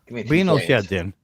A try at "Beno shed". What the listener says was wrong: Beno shed, not Bino.